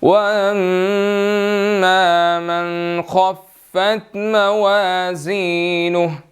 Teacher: اب یہاں پر میم مشدد ہے تو یہاں پر ہم نے غنہ کرنا ہے